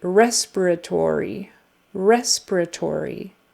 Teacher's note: So it's on the first syllable and then the fourth. But the strongest is on the first syllable.